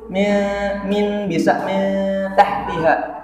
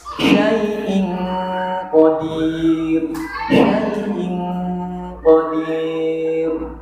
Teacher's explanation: Kalau tadi bunyinya lebih cenderung ke n, sekarang kalau ikhfa ab'ad itu bunyinya cenderung ke ang